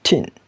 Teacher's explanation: So the phonetic alphabet t, it is a voiceless alveolar stop